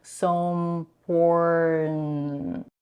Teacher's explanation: she's dropping the first lax I in the word important, and it sounds so important.